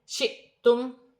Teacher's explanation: حمزہ پر جزم کی حرکت آئے گی تو جھٹکے کے ساتھ پڑھا جائے گا